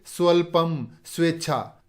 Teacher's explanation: इसी प्रकार सु उपसर्ग, इसमें सु या सु में जो उ है वो आधा व बन जाता है और इसके आगे जो स्वर होता है वो उसमें मिल जाता है